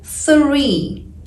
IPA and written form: θriː (three)